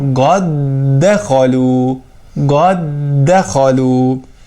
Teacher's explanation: Məsələn, qad dəxalu kəlməsində iki dənə dəl hərfi yan-yana olur və idğam olur. Biz birinci dəl hərfin ikinci dəl hərfinə daxil edirik və təşdidlə, yəni şiddətlə oxuyuruq.